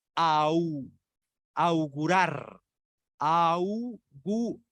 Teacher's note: va una vocal abierta, que es la A, y la U, que es cerrada, y es proyectada hacia el frente